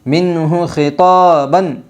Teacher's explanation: اظہار حلقی ہوگا نون ساکن کے بعد حرف حلقی کے 6 حرفوں میں سے ہا آئی ہے، اس لیے نون ساکن کی آواز کو خوب ظاہر کر کے پڑھے گی